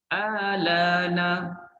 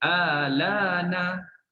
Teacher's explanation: Pendek hamzah istifham bila diibdalkan kepada alif. Jadi kita baca pendek je, 2 harakat je. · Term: qas